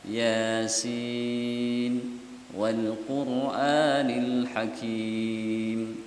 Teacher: Jadi karena ra-nya sukun, sebelumnya dhamma agak angkat.